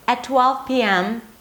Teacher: so it goes up in pitch and then it goes down.